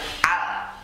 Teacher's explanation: Lam ini makhrajnya ujung lidah ditekan di langit-langit bagian tengah. Jadi jangan sampai keluar lidah, jangan al.